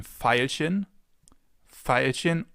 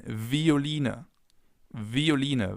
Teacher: It can either be pronounced like the F, as in Veilchen, Veilchen, or like a V, as in Violine, Violine, violin. This makes V a little more difficult because it can be pronounced in 2 ways, either V or F.